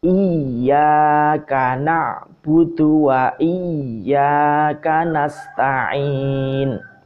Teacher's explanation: Jadi ditekan dulu ya-nya seperti berhenti, ada ya matinya, tapi bukan ya mati yang memanjangkan karena di sini kasroh ya.